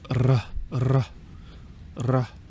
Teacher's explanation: I believe in Austrian German, they roll their R's